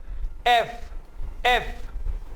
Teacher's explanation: इससे पहले मैंने आपको एफ का साउंड सिखाया था, जिसमें मैंने आपको बताया था कि ऊपर वाले दांतों से नीचे वाले होंठों को दबाना है